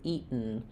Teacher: So it sounds like E, and then you're not really hearing that T, not eat with a burst of air, but rather you hear the T because I stop the air as though I'm making a T. Eat, and then my tongue is there, ready to go right into the sound of the N. · So what we're doing there is we're doing an unreleased or stopped T sound where my tongue goes up to make the T, eat, and then I go right to what's called a syllabic N, eaten. So it sounds like E, and then you're not really hearing that T, not eat with a burst of air, but rather you hear the T because I stop the air as though I'm making a T.